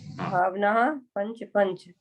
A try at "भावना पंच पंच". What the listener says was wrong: हाँ विसर्ग नहीं है, भावना पंच पंच, हाँ, भावना ऐसे खींच रही थी, उससे विसर्ग सुनाई दे रही है। भावना, पंच,